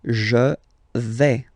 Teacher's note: remember, final S not pronounced here